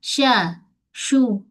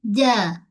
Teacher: tengah lidah kita dengan lelangit keras. Antara lidah dengan lelangit ada ruang. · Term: shin